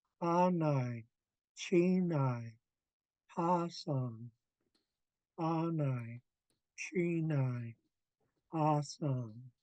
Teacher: the first part of each of these words is all high tone. The ending part of all the words is low tone.